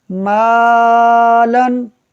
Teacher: میم باریک حرف ہے، الف سے پہلے ہے تو الف کو بھی باریک پڑھا جائے گا